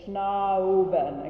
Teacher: So ah, just stay on the ah till very near the end, and then you're going to do an oo as you go into the bun